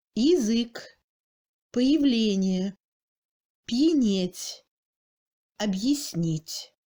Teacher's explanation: Après une autre voyelle, un signe mot dur, mais hors accent, en position du premier degré de réduction, c'est-à-dire dans une syllabe prétonique. Le ya garde son phonème de iode, mais le phonème A se réduit à un I raccourci. En fait, ce son est moyen entre le I et le E, plutôt I.